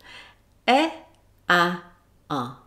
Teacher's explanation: Well, you probably found that your tongue position moved with your jaw. So when your jaw was almost closed, your tongue was high, meaning close to the roof of your mouth. And as your jaw opened, the tongue got lower. So when the tongue is low, the jaw is usually open. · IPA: e, æ, ʌ